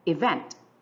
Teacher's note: For example, the word event. We have here 2 syllables, E and vent. The first one is unstressed. The second one is stressed.